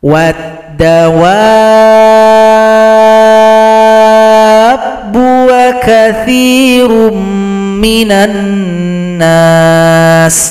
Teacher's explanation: Mad jumpa tasydid disebut dengan mad lazim mutsaqqal kalimi. Panjangkan dulu 6 harokat atau 6 ketukan, baru ditasydidkan kepada huruf ba.